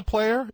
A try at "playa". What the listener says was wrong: said it wrong not player Playa Playa yeah yeah no R